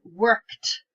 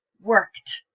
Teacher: if we take a word like work, which ends in an unvoiced sound, k, when we add an ed to it, for example, we get worked. We get a t sound